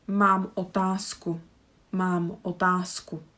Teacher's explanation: z is the voiced, k is unvoiced, so we need to switch one of these